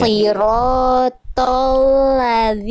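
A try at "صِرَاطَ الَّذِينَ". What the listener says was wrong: Lamnya tipiskan Bunda. Jangan ke bawah tebal ko-nya. Lam kan huruf tipis.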